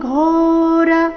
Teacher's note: ಘೋರ ಘೋ ಮಹಾಪ್ರಾಣ ದೀರ್ಘ